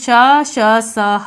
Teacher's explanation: अब ये ऊष्म व्यंजन क्या होते हैं, तो जब हम इन वर्णों का उच्चारण करते हैं तो हमारे मुंह से जो प्राण वायु निकलती है वह संघर्ष के साथ निकलती है